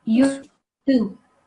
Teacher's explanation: I don't want to hear the su sound. I want to hear the thu, the soft one.